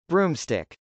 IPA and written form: brˈumstˌɪk (broomstick)